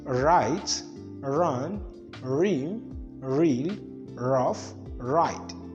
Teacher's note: as the tongue rolls, the tip of the tongue touches the alveolar ridges incessantly · characterized as the voiced alveolar frictionless continuant